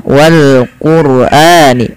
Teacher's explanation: Karena ada huruf ra sukun yang didahului dengan huruf dhamma. Maka ia wajib dibaca dengan bacaan tebal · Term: dibaca dengan tebal